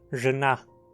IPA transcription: ʐɨna